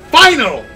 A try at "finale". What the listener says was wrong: The finale. It's like Royale, you gotta put extra pronunciation on the E for some reason. It's not like every other English word where E is silent.